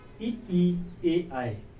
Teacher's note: जीभ अगले भाग से बोली जा रही है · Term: अग्रीय